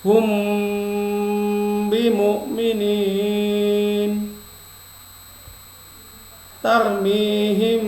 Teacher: Dikatakan ifa safawi apabila huruf ba berada setelah mim bersukun dan terjadi di antara 2 kata serta dibarengi dengan proses gunnah atau mendengung, maka dibaca dengan suara yang samar antara bunyi mim dan ba pada bibir, kemudian ditahan kira-kira 2 ketukan seraya mengeluarkan suara ifa dari pangkal hidung, bukan dari mulut